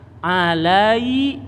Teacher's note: ya mati sebelumnya Fatah jadi Mad lain Jadi suara I